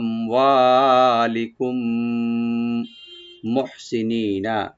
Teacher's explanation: আর মিম সাকিনের পরে যেহেতু এখানে মিম আসছে নেক্সট শব্দ, এখানে আমরা একফা স্বাভাবিক করবো, দুইটা মিমকে মিলাইয়ে গুণা সহকারে পড়বো।